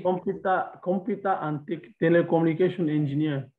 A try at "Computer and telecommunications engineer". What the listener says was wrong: Always put S in telecommunications. So remember that in French, they don't pronounce T, D, and S at the end of a word, but in English, you pronounce it. When you see T, you put T.